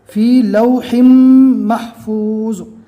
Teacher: 2 زبر کی جگہ 1 زبر، 2 زیر کی جگہ 1 زیر اور 2 پیش کی جگہ 1 پیش ہی پڑھنا ہے۔ فی لوحم، ہا کی زیر کو میم سے ملانا ہے، 1 زیر چھوڑ دینا ہے، پورا تنوین نہیں پڑھا جائے گا۔ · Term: تنوین چھوڑ دینا